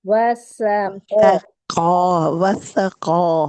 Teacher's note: وسقا قاف کو موٹا کیجیے